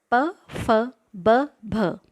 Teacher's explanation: इनका उच्चारण करते हुए हमारे होठ सम्मिलित हो जाते हैं। आपको इनका उच्चारण करके अनुभव आप ले सकते हैं, इसलिए इनको ओष्ठ्याः कहा जाता है।